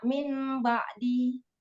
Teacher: di iklab itu ada proses dari nun ke mim dulu baru ba. Kalau di ikhfa syafawi langsung mim ketemu ba gitu.